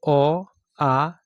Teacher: अ आ क वर्ग ह और विसर्ग इसका उच्चारण स्थान कंठ है · अ आ यह दो ऐसे स्वर है जिसका उच्चारण स्थान कंठ है